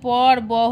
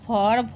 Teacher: আর প আর ফ হচ্ছে অঘোষ, আর ব আর ভ হচ্ছে ঘোষ। আর এদিকে প আর ব হচ্ছে অল্প প্রাণ, আর ফ আর ভ হচ্ছে মহাপ্রাণ।